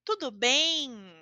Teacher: eu não vou fazer a letra M como certo com os lábios tocando um ao outro